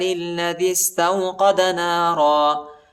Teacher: دال کو سین کے ساتھ ملائیں گے